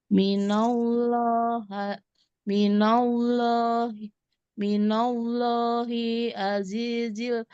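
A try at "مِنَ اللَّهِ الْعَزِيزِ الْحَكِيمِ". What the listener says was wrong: ada lam sukunnya. Minallahil. Minallahil azizil hakim.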